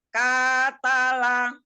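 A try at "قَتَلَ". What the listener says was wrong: Oh, bukan ke ko, tebalkan.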